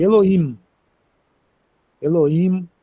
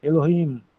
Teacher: Muita gente fala, muito judeu fala assim: "Eloim, Elohim" ou fala Elohim, o sonzinho arrastado, mas não não muito forte. Elohim é o H fraquinho, não é muito forte não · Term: H fraco